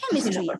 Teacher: when you have the words with just three syllables like chemistry obviously the stress will be on the first syllable because that is the third last